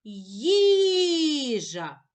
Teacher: Покличемо слово їжа. Наголошений перший склад.